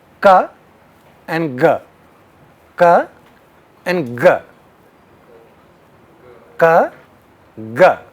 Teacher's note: that's the voicing which makes the difference between ka and ga · you do see more vibration when you say ga.